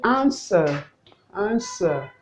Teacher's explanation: the w is not articulated therefore it is answer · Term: silence